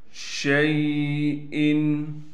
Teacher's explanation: حمزہ کو صاف کر کے پڑھنا ہے، حمزہ پر غنہ نہیں کرنا